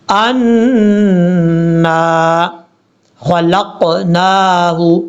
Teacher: نون کے اوپر شد ہونے کی وجہ سے غنہ کیا جائے گا اور ایک الف کی مقدار لمبا کریں گے آگے الف کی وجہ سے.